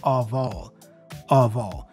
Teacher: the F is pronounced as a V, which then joins with the O, the vowel A there.